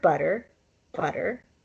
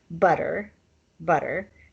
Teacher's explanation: the single r is called a flap and that's where your tongue touches the roof of your mouth one time · these words have the flap r in the middle of their sound